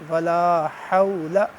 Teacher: اور حا حروف حلقی میں سے ہے، حلق سے ادا ہوگی